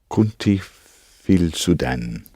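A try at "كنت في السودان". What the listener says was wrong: The helping vowel isn't as strong as that. It's not as strong as that.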